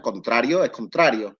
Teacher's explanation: vemos que la N en implosivo nunca cae